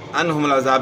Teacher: عن عین کی آواز گلے کے درمیان سے نکالنی ہے اور ہا کی آواز گلے کے آخر سے